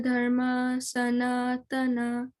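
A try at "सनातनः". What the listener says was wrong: Sanatanaha. Whenever we see the H, it's Sanatanaha. Say Sanatanaha.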